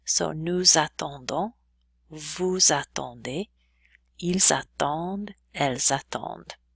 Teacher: Then we have the same thing happening with the S's in nous, vous, il, and elle. We're going to make them sound like a little bit of a Z.